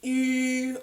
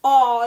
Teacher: a pure or sort of closed E is very spread, very wide E, whereas an open vowel, aw, is very open, very round, very tall.